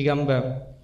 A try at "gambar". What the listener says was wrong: Kan udah bilang huruf R-nya dibaca ya. Nah di situ suaranya berbayang tadi.